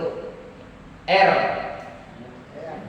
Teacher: Di sini ada ro. Ro itu sifatnya ada sedikit namanya takrir. Takrir itu getar